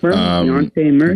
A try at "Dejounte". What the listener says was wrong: Yeah, I think the J is not silent, right? Dejounte.